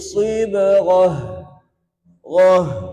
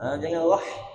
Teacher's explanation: Huruf ghain tebal tadi, huruf ta marbutah kita waqafkan jadi ha.